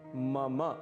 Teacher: इसे मम बिल्कुल भी नहीं कहना है, इसका शुद्ध उच्चारण है मम। मम अंत में अ की ध्वनि अवश्य आनी चाहिए।